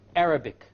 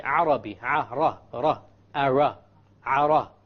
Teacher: The English R comes from the middle of the tongue, and the Arabic ra comes from the tip of the tongue. It is very important that when we pronounce the R in Arabic, the ra in Arabic, we do not roll the tongue.